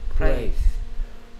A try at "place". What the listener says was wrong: Praise가 아니고 Place. L은 혀가 밖으로 튀어나오면서 윗니 밑에 으 메롱하듯이 붙습니다. Place. 뭐 너는 혀가 거꾸로 목구멍 뒤로 말려 들어가면서 발음하니까 R처럼 발음하는 거지. 너는 혀가 뒤로 동그랗게 말려 들어가.